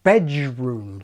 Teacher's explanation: bedroom contains not d, but j